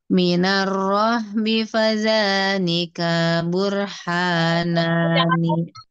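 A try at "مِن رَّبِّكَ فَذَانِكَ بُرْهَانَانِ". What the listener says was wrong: Kafnya tadi kepanjangan sedikit.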